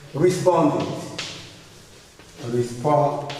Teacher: ED is pronounced id after these sounds. After which sounds? After t and d.